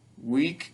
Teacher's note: week goes up and drops down